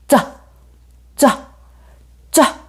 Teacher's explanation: 혀에 많은 부분이 입천장에 붙었다가 떼면서내는 소리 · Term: 유성음